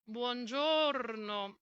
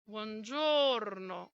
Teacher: one vowel which is different from the others. It's longer. It's the o in the middle of the word. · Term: phonetic accent